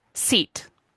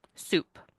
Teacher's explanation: why are my lips smiling for the S in seat, but round for the S in soup? Lip rounding in that case doesn't change the way the S sounds, but my lips are anticipating the next sound. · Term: co-articulation